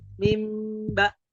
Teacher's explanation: mim dan Ba Itu kedekatan makhrajnya itu sangat kental sekali bahkan kalau kita bilang mim ba itu tidak perlu gerakan dua kali ya hanya perlu sekali saja